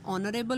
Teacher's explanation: for example ऑनरेबल में एच की sound नहीं आ रही